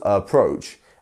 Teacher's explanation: we have two syllables approach and our second syllable is the one that is getting the stressed